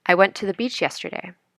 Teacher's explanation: listen to the following sentence I went to the beach yesterday the words went and Beach stand out more than the other